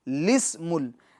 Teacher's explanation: نہ لام سے پہلے والا نہ لام کے بعد والا الف، بلکہ لام کے نیچے زیر دے کے پڑھنا ہے